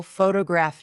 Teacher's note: photograph noun is stressed on the first syllable.